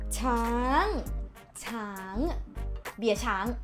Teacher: The sound goes down and up.